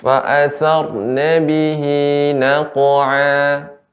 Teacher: Huruf qaf ya ketika disukunkan ya maka jadi menjadi qalqalah, dan qaf huruf isti'la sehingga pengucapan qaf yang qalqalah dibaca dengan tebal.